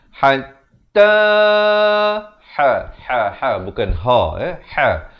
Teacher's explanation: Hatta dipanjangkan 4 atau 5 harakat.